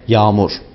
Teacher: Yağmur kelimesindeki ortadaki yumuşak G'yi söylemeyiz, kendisinden önceki A'yı biraz uzatarak bu kelimeyi telaffuz ederiz. Yani yağmur yerine yağmur.